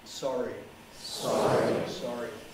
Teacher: english r typically an approximant with the air coming over the center of the tongue tongue tip somewhat raised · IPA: ˈsɒri